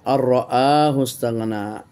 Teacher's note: এটা হয়েছে ইদগাম, নুন সাকিনের পর র এসেছে বেগাইরে গুন্না